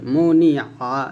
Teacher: আইন জবর আ, মুনি আ, এই আইনটা গলার মাঝে চাপ দিয়ে বলতে হবে